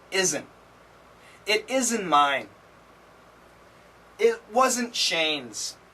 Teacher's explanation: in America, many times we cancel the T. So we say isn't.